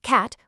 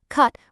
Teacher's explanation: cat with a flat a versus cut with a sharp uh